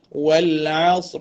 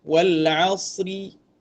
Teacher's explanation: Kemudian huruf ra. Huruf ra ini ketika disukunkan kerana waqaf dia baca tebal. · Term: ra yang tebal